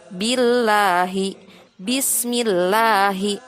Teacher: dibaca tarqiq jika lafaz Allah didahului harokat kasroh.